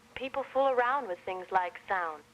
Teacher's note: it's like you're dropping the D from around and sound